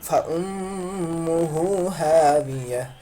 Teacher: الٹا پیش تو اس کو ہم واو مدہ کے برابر پڑھتے ہیں یعنی ایک الف کے برابر کھینچ کر پڑھتے ہیں